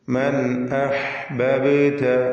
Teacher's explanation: മൻ അഹ്ബബ്ത, ഈ പദത്തിൽ ബാഇന് സുക്കൂൻ വരുന്നുണ്ട്. ഖൽഖല സുഗ്റ നൽകി ബാഇന്റെ സുക്കൂനിനെ ഹറക്കത്ത് പോലെ വ്യക്തമാക്കി ചലിപ്പിച്ച് ഉച്ചരിക്കുക